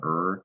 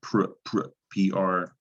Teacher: that is an r controlled sound er not to be confused with pr pr pr consonant pair